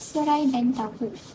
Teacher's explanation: terhasil bunyi luncuran iaitu bunyi vokal pertama mengeluncur ke bunyi vokal yang kedua